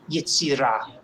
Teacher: accent is on the last syllable